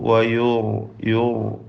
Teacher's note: അലൈഹൽ മൗത വയുർസിലു, വയുർ യുർ എന്ന് പറയുമ്പോൾ റായിന് തഫ്ഖീം, തഫ്ഖീം നിസ്ബിയാണ്